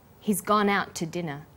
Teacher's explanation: The two is unstressed. When we link out, which is stressed, and to, which is unstressed, the final t sound in out is held slightly longer.